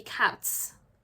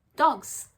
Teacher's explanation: sometimes the ending in the plural could be a hessing sound like cats and sometimes it's a buzzing sound like dogs